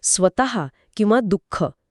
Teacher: हे उच्चारताना आपण प्रत्यक्ष श्वास बाहेर फेकतो · विसर्गाचा उच्चार करताना ह सारखा एक हलकासा पण स्पष्ट आवाज येतो.